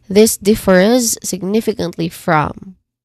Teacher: in differs, we try to do a buzzing sound in the end instead of a hissing sound, because it's the spelling is letter S, but we try to really showcase a buzzing sound here.